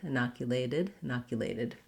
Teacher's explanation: ted at the end often sounds like the word did · our t ends up sounding like a flap or a light d in this word